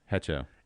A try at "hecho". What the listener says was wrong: Echo. Echo. The H is silent.